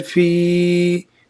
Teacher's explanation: या मद को एक अलिफ के मिकदार खींच कर पढ़े।